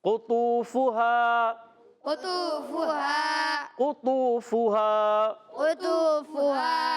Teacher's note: काफ जो है जबान की जड़ और तालू के नरम हिस्से से अदा होता है